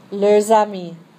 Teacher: the only time you're going to hear a difference between the two leur is when you have this plural one followed by a vowel, and so you hear that S as a Z. Otherwise, leur singular and leur pluriel sound exactly the same. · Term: liaison